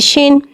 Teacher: शीन में तफशी वाली सीटी को ज़ाहिर करके पढ़ेंगे